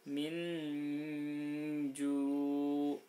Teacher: nunnya tetap dibaca agak terang, tapi kemudian samar-samar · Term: ikhfa hakiki